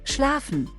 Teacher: P turned into F or PF